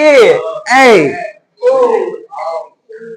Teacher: ए ऐ कंठ से भी आ रहा है और तालु से भी हो रहा है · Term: कंठ तालु